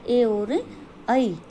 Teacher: कंठ तालव्य यानी कंठ और तालु दोनों से बोले जाते हैं